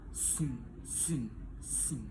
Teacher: bagian belakang lidah menyentuh velum sehingga udara keluar melalui hidung. Bunyi ini biasanya muncul di akhir suku kata dan tidak diawali huruf g saat diucapkan.